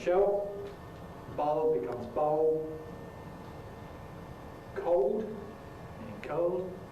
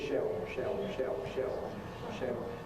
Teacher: Wherever you get a Dark L [ɫ], in London you get an [o] instead. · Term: L vocalization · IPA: [ʃeo]